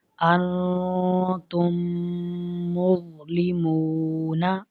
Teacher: اور میم ساکن کے بعد دوسری میم ہے تو اس میں ادغام شفوی ہو رہا ہے، یعنی میم ساکن میں ہم نے غنہ کیا ہے